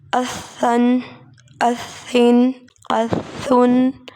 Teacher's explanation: سیٹی کی آواز نہیں آنی چاہیے ثا کو ادا کرتے ہوئے